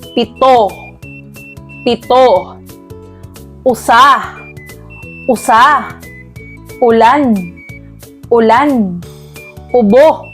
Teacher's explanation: ito ay binibigkas ng tuloy-tuloy na ang diin ay nasa huling pantig ng salita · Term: diing mabilis